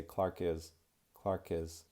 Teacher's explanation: I'm going to connect that K sound since the next word begins with a vowel